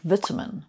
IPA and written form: ˈvɪtəmɪn (vitamin)